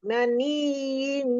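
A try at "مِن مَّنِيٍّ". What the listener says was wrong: Idghami, mim bukan min, mim maniyyi, iyanya nabar yang pertama, maniyyi, yang kedua baru tahan, mim mani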